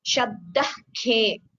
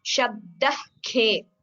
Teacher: So that pronunciation which you are getting in between Shabdah and khe, Shabdah khe, that is a Jihva Muliya.